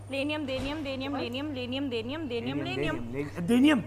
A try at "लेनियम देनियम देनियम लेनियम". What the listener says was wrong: देनियम बोला इसने बीच में।